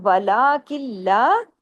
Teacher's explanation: اب دیکھیں یہاں بھی ادغام ہو رہا ہے، نون ساکن کے بعد لام ہے، یہ ہوتا ہے ادغام تام بلا غنہ، کوئی غنہ نہیں ہے اس میں